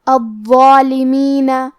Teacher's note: ضا حروف التفخیم میں سے ہے تو ہم یہ حرف کو بھاری آواز میں پڑھیں گے۔ ضا کے اوپر کھڑا زبر ہے تو یہاں مد الف ہے تو ہم مد الف کو بھی بھاری آواز میں پڑھیں گے